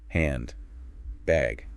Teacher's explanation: You clearly hear that N sound, right? made with your tongue behind your teeth.